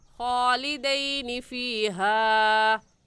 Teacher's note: اگر یا ساکن سے پہلے زیر ہوتی ہے تو یا مدہ ہوتا، اور مدہ کو کھینچتے ہیں، لین کو نہیں کھینچتے. تو یہ یا لین ہے، اور لین کو ہم کھینچ کر نہیں پڑھیں گے، جلدی سے پڑھ جائیں گے